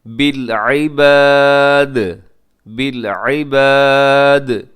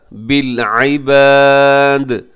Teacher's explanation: آخر میں دال ہے وہ قلقلہ کیجیے گا